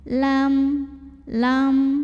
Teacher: mim sukunnya dibunyikan dengan jelas bunyi M-nya. Jadi tidak perlu kita tahan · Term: idhar syafawi